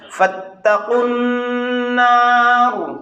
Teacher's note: اس کو فَاتَّقُوا النَّارَ نہیں کہنا، سیدھا قاف کو نون سے ملا دینا ہے